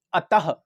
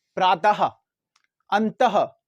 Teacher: ये जो हा का लास्ट में साउंड सुनाई दे रहा है इसी को तो आप विसर्ग बोलते हो।